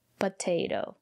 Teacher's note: the syllable after the second T is not stressed we pronounce the letter t as D